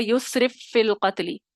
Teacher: پہلا یسرف والا ساکن، فی والا متحرک، تو پہلے فا کو دوسرے فا میں داخل کر دیا، مثلین کا ادغام ہو گیا. اور آپ کو ف کی آواز سنائی دے رہی، ایک ہی آواز سنائی دے گی، بس مضبوطی آ جائے گی مشدد ہونے کی وجہ سے. مکمل تام ادغام ہو گیا، یسرف فی القتل.